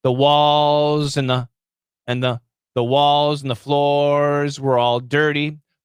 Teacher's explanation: the n can kill the th because the th is a weak sound okay so and the becomes an with a really long end · and the becomes an with a really long end sound it's fast but it's actually stretched out